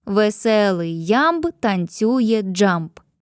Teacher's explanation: Ненаголошений плюс наголошений, ненаголошений наголошений тощо. Кожен рядок містить по п'ять таких стоп.